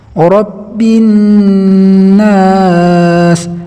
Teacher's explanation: ada nun yang berharokat tasdid, maka ini disebut nun musyaddadah. Hukumnya gunnah. Cara membacanya disertai dengan dengungan